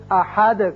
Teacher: دال ساکن ہو جائے گا اور اس کی صفت قلقلہ ادا کریں گے. احد کر کے پڑھیں گے.